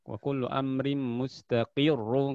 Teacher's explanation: Wa kullu amrim mustaqirrun, kalau disambung jelas tebal karena ro-nya dhammah. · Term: ro tasydid